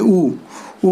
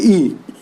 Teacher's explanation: इन स्वरों का जब हम उच्चारण करते हैं तो मुंह पूरी तरीके से ओपन नहीं होता है, इसीलिए हम इनको संवृत्त बोलते हैं।